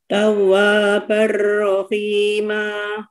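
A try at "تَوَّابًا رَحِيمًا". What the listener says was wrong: Nah, agak diam dulu Bu, di yang di wa-nya. Tawwa, coba Bu. Wa-nya tetap 2 harokat gitu Bu.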